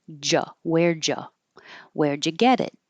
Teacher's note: a d and a y next to each other make a j